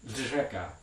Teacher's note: In Czech, there's this unusual voiced alveolar fricative trill. I also can't really pronounce this one, but it's going to be something like dřeka.